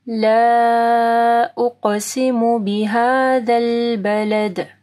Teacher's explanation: لا کے اوپر دیکھیں مد ہے، اس کے بعد حمزہ ہے، ٹھیک ہے، تو 4 سے 5 حرکات کے برابر اس کو لمبا کریں گے